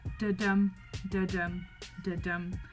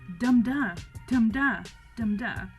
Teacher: Instead of having an unstressed, stressed, that da-dum, da-dum, da-dum, that kind of natural pattern, it's actually the opposite. It's more stressed, unstressed. So dum-da, dum-da, dum-da. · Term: trochaic tetrameter